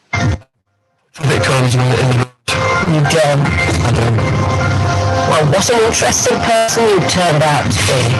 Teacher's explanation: her intonation is the intonation of boredom · saying you don't is the wrong kind of intonation there. It's expressing amazement, but actually we all know it's a boring job. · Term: false prosody, sarcastic prosody